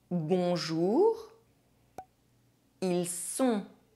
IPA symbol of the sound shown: ɔ̃